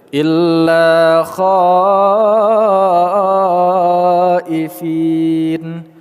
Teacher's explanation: Kha kita panjangkan mad wajib muttasil 5 harakat